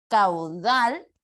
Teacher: Entonces dal es mi sílaba tónica, pero cau sería la sílaba átona.